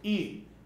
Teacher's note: é uma palavra paroxítona, ou seja, ela tem a penúltima sílaba tônica